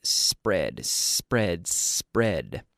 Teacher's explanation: there's no e there's no vowel before the SP